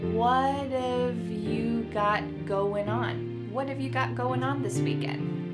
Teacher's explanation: what and have are going to be pushed together. What if you got going on that final G in the word going is going to be cut off and we'll just say going.